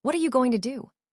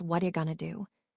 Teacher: The T in what connects to the R creating wada.